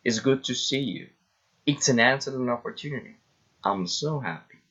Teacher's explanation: Exclamatory sentences, falling intonation.